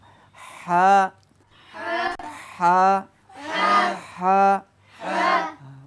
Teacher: নরম হবে কণ্ঠনালীর মাঝখান থেকে হা উচ্চারণ হয় স্বাভাবিকভাবে চাপাচাপি করা যাবে না